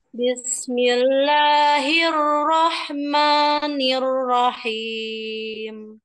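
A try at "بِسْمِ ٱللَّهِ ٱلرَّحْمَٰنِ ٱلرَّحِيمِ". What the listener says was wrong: sekali lagi bismillahnya jangan ada yaahman itu tadi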